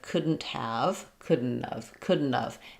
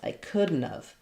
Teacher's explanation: So have reduces to just of. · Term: reduction